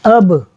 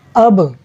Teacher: جب با پڑھ رہے ہیں تو آواز تھوڑی سی پلٹتی ہے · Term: حروف قلقلہ